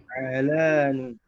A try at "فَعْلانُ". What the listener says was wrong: Not fa'lanu. Fa'lanu. Fa'lanu with dhamma. No, with dhamma, not tanwin, not dhammatan. Fa'lanu.